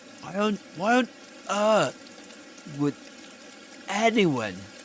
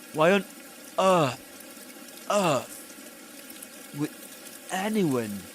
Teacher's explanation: Reinforcements, which is a fancy name to refer to beginning a word with a glottal stop because of emphasis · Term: glottal reinforcement